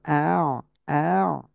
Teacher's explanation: আইন জবর আ গলাটা চেপে পড়তে হবে